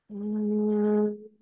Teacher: U में थोड़ा सा lips और close हो जाते हैं. म is with completely closed lips.